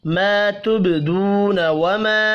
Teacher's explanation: ما الف مدہ ہے, دو واو مدہ ہے, وما یہ بھی الف مدہ ہے. تینوں کو ایک ایک الف کے برابر کھینچ کر پڑھیں گے